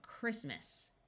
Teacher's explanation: this T is silent and the A takes on a muffled schwa sound